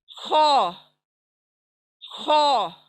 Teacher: देखें हिंदी में एक जो लेटर है वो ख है, तो हम अरबिक में इसको ख नहीं पढ़ेंगे, इसको गार्गल की जगह से निकालेंगे ख